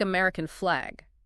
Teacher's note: you take American flag and there flag feels like the stronger word